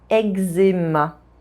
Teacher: The Z sound modifies the K sound and it becomes a G sound.